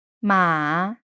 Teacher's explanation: Dipping, a word for horse